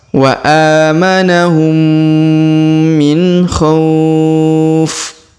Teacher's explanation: huruf nun sukun ketemu kho, ini bukan huruf dengung ataupun huruf ikhfa, maka jangan didengung samar ya, dibaca izhar atau sempurna atau jelas · Huruf kho kita panjangkan 2, 4 atau 6 harokat karena di depan huruf kho terdapat waw sukun sebelum huruf pemberhentian, dan huruf pemberhentian huruf fin kita sukunkan atau kita matikan.